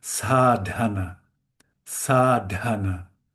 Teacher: There's a D and we let it explode a little with a little with a little air. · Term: aspired sound